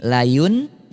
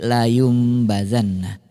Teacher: bunyi nun sukun atau tanwin yang tadinya bunyinya An In Un itu berubah menjadi am em Um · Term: iqlab